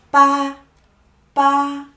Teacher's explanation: The tone is flat.